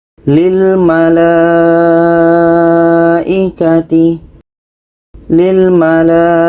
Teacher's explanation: Panjangnya empat sampai lima harakat bila wasl atau disambung. Wasl berarti terhubung. · Jadi, kita membacanya dengan empat sampai lima harakat. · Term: mad wajib muttasil